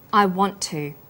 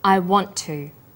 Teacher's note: the final T sound in want is held slightly longer on the tongue then to is pronounced the T sound is pronounced only once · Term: consonant plus same consonant linking